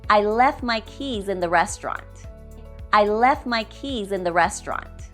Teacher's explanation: Remember, we will drop the T in the word left so we can sound more natural. We would say, I left my keys in the restaurant.